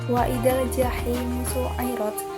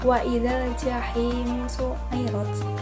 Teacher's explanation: ada kasroh diikuti dengan ya sukun. Dibacanya 2 harokat. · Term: mat tabi'i